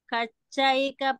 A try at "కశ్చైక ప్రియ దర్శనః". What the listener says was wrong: ఇక్కడ మీరు కచ్చైక అన్నట్టుగా వినిపిస్తుంది అది కశ్చయిక ప్లస్ ప్రియ చెప్పాలి